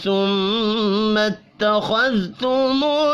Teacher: میم مشدد پر غنہ کریں گے، خا کو پر پڑھیں گے، ذال اور لام ساکن پر قلقلہ نہیں کرنا۔